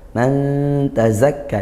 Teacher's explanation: ikhfa hakiki disamar dengung dengan samar karena nun sukun bertemu huruf ta